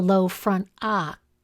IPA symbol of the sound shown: a